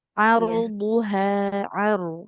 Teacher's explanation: huruf rnya kalau sukun didahului fathah dia tebalkan